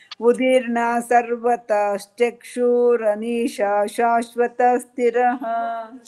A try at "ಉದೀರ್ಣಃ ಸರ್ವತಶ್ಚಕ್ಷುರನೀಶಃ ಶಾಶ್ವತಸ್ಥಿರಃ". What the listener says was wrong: ರನೀಶ ರನೀಶಶ್ ಅಂತ ಒತ್ತಕ್ಷರ ಬರ್ಲಿ. ರನೀಶ ಶಾಶ್ವತ ಸ್ಥಿರಃ.